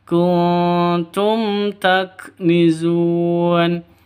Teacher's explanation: mim mati bertemu dengan ta jelas terang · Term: izhar syafawi